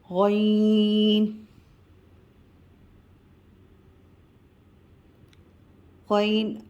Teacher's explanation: غین پر مد ہے تو ہم اسے کھینچیں گے، اور غین موٹا حرف ہے تو موٹے حرف کی ادائیگی کریں گے